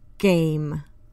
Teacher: the back of the tongue is pressed to the back of the mouth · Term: voiced